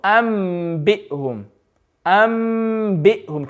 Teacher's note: Then we did the third rule of noon sakin and tanween, which was if there's a ba after the noon sakin or the tanween, then the noon sakin and tanween turns into a letter mim. It turns into a letter mim, and you normally have that little mim as the clue as well.